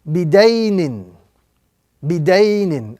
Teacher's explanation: focus on ya lean, which must be pronounced gently and softly with no prolongation or exaggeration whatsoever